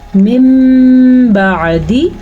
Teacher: اقلاب کا ہے من بعدی، نون ساکن کے بعد اگر با آ جائے تو نون ساکن کو میم میں بدل دیتے ہیں